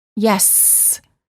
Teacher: the s sound is considered a continuant because the airflow can continue as long as we have air in our lungs